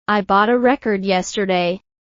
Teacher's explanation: For example, the word record can be a noun or verb, depending on where you stress it. When you stress the first syllable, it's a noun